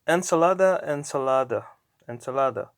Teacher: the emphasis goes to the second to last syllable